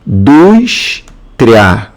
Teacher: Dus aqui, ó, é a sílaba tônica. Essa sílaba tônica é a penúltima.